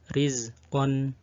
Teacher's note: ra yang kasroh dibaca tarqiq atau tipis.